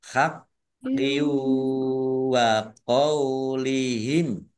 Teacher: kasroh tanwin bertemu dengan huruf wawu bacaan idgham bi gunnah masuk dengan mendengung